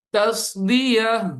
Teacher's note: تصدیہ, یہاں پہ تا ختم ہو جائے گا, ہا میں کنورٹ ہو جائے گا. جب بھی وقف کریں گے تن والا ورڈ ہو, تین ہو, تو وہ ہا میں کنورٹ ہو جاتا ہے, تن ہو جائے.